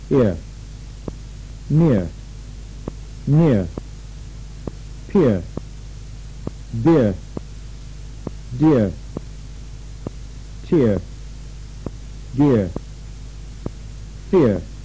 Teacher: as in here the essential movement for the sound is this the tongue Falls from high in front